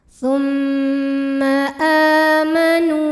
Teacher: Sebab ada waw sukun didahului baris dhammah. Maka cara bacanya panjang nunnya 2 harokat. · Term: mad tabi'i zahiri